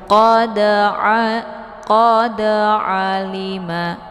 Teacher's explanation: Ini dinamakan dengan qalqalaf sughra. Jadi qalqalaf sughra ini dibaca secara memantul dan pantulannya itu adalah pantulan ringan. Jadi tidak begitu kuat.